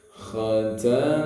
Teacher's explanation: Khoknya tenggorokan bagian atas ya, seakan-akan kayak ngorok dikit lah ya.